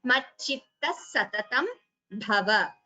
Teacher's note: Instead of visarga, you get s. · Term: Visarga sakara